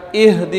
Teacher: اہدی کے اندر ہا. تو وہ یہی ہا ہے جو انتہائی حلق سے ادا ہوتا ہے. تو اہدی، اس کے اندر دونوں مثالیں آ گئی، ایک حمزہ کے بھی اور ہا کے بھی.